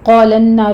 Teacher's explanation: قال النار میں نون غنہ واجبہ ہے، یہاں پہ نون مشدد ہے.